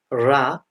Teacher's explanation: the tongue is curled backward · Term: retroflex